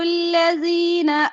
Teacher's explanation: الَّذِينَ کا لام باریک رکھیں گے، ٹھیک ہے۔